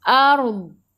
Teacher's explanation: Bila berhenti dengan huruf dad, tepi lidah menyentuh gigi geraham atas.